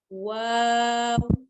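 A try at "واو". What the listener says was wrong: Bukan wow. Monyongkan bibirnya. Wow. Wow.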